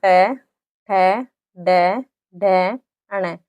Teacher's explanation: यह हमारी जो जीभ होती है वह मुड़कर ऊपर स्पर्श कर रही है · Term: मूर्धन्य